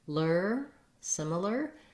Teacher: Letters AR say the ER sound in this word, so be careful to make sure you still use a tight back American R. It sounds like lur, similar, but you don't have stress on it, so you don't have a lot of time to make that.